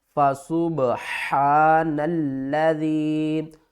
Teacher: نون کو ہم نے لام کے ساتھ ملانا ہے، درمیان والی الف کو چھوڑ دینا ہے